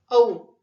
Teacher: अ अधिक उ बरोबर औ हे संयुक्त स्वर आहे